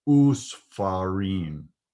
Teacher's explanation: In those three cases, the shva becomes a shurek, or the oo sound.